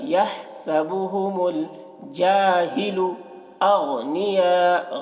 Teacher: ہا کو حلق سے ادا کریں گے، یحسبهم الجاہل اغنیاء، غین کو پر پڑھیں گے کیونکہ غین حروف مستعلیہ میں سے ہے، اور یہاں پر مد دیکھیے مد متصل ہے کیونکہ حرف مد کے بعد حمزہ اسی کلمہ میں ہے تو مد متصل کو 3 یا 4 الف کے برابر کھینچ کر پڑھیں گے۔